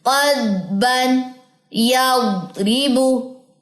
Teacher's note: क़द्बन, आपको मुंह के अंदर हल्की सी एक वाइब्रेशन सी फील होगी। क़द्बन, जुबान की दोनों के जो उसकी करवट है वो ऊपर दाढ़ों से लग रही है, मेरी आपकी भी लगनी चाहिए।